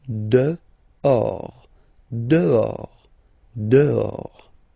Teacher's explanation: Okay, so remember final S not pronounced, and then this H in French doesn't exist phonetically, so you don't pronounce it